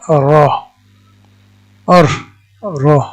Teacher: আমার জিহ্বার অগ্রভাগের পিঠ এবং সোজা উপরের দিকে তালু, এখান থেকে উচ্চারিত হয় র